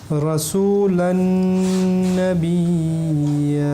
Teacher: Noun Mushaddad, Et là, on va appliquer une intonation nasale forte. c'est-à-dire Idram Bil Ghunna.